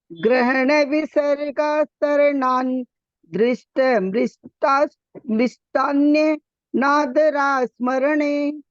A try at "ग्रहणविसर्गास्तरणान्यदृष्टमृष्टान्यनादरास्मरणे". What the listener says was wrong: आप न तक रुक रहे हैं तो फिर दृष्ट नहीं है, फिर अदृष्ट है। ग्रहण विसर्गास तरणान्य दृष्ट, इकट्ठा बोलिए, तरणान्य दृष्ट। यहाँ मत रुकिए, जहाँ संधि होती है ना वहां नहीं रुकना चाहिए।